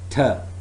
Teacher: it's voiceless alveolar plosive sound